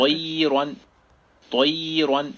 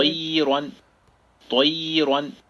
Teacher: اب طیرن کی طوا کو ذرا خیال رکھیں کہ طوا بولتے ہیں نا ہم, تو پھر طیرن, تو بعض دفعہ نہیں, عام طور پر جو پڑھنے والے ہوتے ہیں وہ اس کی ادائیگی پوری نہیں کر پاتے. طوا جو ہے نا وہ سب سے موٹے حروف میں سے تفخیم کے لحاظ سے پہلے نمبر پہ ہے, تو پوری زبان ہماری تالو کی طرف جاتی ہے